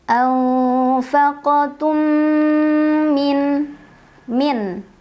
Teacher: Karena ada mim sukun bertemu dengan huruf mim. Cara membacanya mim sukun dileburkan atau dimasukkan ke mim kedua sambil dengung dulu. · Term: idgham mimi